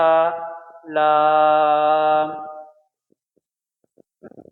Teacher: लाम का मखरज जो ये भी बहुत आसान है और आसानी के साथ हम निकाल सकते हैं, जहाँ से नून अदा करते हैं लाम का भी वहीं से मखरज ज़बान का सिरा और तालु का अगला सख्त हिस्सा से لام ادا ہوتا ہے